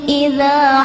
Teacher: terdapat huruf dzal yang pelafalannya ada pada ujung lidah